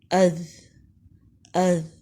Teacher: زبان کی نوک سامنے کے اوپر کے 2 دانتوں کے سرے یعنی کناروں سے لگ رہی ہے اور ذرا باہر کو نکل رہی ہے۔ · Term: ذال